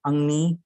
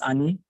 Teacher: velar nasal na is deleted when it's followed by the alveolar nasal sound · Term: deletion of velar nasals